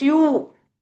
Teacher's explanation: So when we say you our lips are rounded.